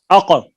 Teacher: قلقلہ میں ایک دفعہ آواز پلٹے گی